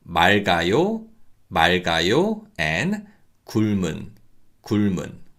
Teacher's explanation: But when the following syllable begins with 이응 consonant, we read the first consonant and the second consonant carries over.